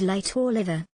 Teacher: They are produced by letting the airstream flow around the side of the tongue, while the tip of the tongue makes contact with the middle of the alveolar ridge. This produces the sound, L, as in the words beginning with light or liver. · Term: liquid, liquids